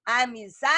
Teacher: Zá, sílaba tônica, é uma paroxítona